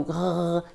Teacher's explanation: Tout d'abord, sachez que le R se produit dans le fond de la gorge en faisant une friction avec le dos de la langue et le derrière de la gorge. On met aussi de la vibration avec la voix. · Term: son R